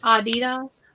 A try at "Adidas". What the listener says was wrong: But with the long A, not the short A.